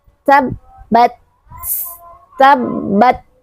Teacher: ketika dia sukun maka harus ada percikan udara.